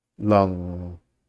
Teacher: you can't hold a G sound, but you can hold an NG sound. And so it's that part right before the G that you can hold.